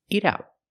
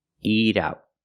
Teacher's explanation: And the T in out is a stop T